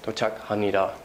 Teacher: And at the end of the sentence, dochak hamnida, your intonation is going down on verb endings or other endings in Korean